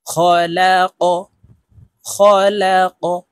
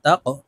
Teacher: দেখুন এখানে কফের উপরে ত্রিভুজ চিহ্ন উপরের দিকে ধাবিত করে দেওয়া আছে। আমরা এই কফকে ধাক্কা দিয়ে উচ্চারণ করব, উপরের দিকে ধাবিত করে ধাক্কা দিয়ে উচ্চারণ করব। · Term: কলকলার হরফ